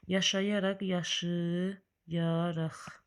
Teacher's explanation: Vurğu sözünün 3-cü hecasına düşür,